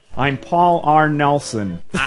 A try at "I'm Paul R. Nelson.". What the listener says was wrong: Okay, it's more nasal. I'm Paul R. Nelson. I'm Paul R. Nelson. If it helps, pinch your nostrils between your thumb and forefinger. I'm Paul R. Nelson.